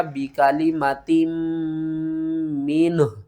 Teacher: بہت سے مشکل ترین لمحات آ جاتے ہیں جب آخری حرف ہو اور دو حروف اکٹھے ساکن ہوں۔ وقف کی صورت میں ہا کو بھی ساکن کریں گے، نون کو بھی ساکن کریں گے اور میم کے اوپر غنہ بھی کریں گے۔